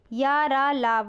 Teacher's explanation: जिन व्यंजनों के उच्चारण में जीभ पूरी तरह उच्चारण अवयवों को स्पर्श नहीं करती है, वो कहलाते हैं अंतस्थ व्यंजन। ठीक है, या, रा, ला, वा, ये आपके अंतस्थ व्यंजन है।